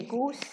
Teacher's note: Now goose, the S here is voiceless. It's a sa. And berry, the B is voiced.